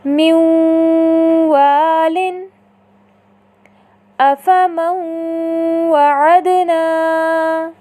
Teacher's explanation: آپ نے دیکھا ان دونوں مثالوں میں نون ساکنہ کے بعد حرف واو متحرکہ آیا تو ہم نے نون ساکنہ کو حرف واو متحرکہ کے ساتھ اس طرح ملا کر ادا کیا کہ دونوں ایک ساتھ مشدد ادا ہوئے اور ملانے کی صورت میں نون ساکنہ کی آواز صفت غنہ کی صورت میں باقی رہی